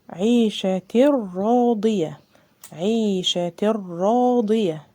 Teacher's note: مفيش غنة بقى كده، ادغام بغير غنة، مفيش غنة وكمان ادغام كامل